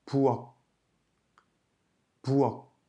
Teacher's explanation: En fin de syllabe, elle se prononce comme un kia, c'est-à-dire un son K aspiré.